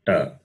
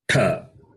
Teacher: The first letter, ta, simple, ta, Alpa Prana. The second letter is tha, Mahaprana.